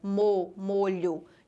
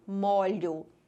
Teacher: O que mudou foi o som. O primeiro O era fechado e o segundo O era aberto.